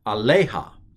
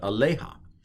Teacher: the accent i believe is on the lay